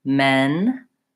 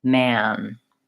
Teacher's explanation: the central vowel that's not too open, and then the a vowel second